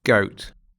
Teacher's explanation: Дифтонг goat, начинается от звука шва, как на конце слова «мама». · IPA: /əʊ/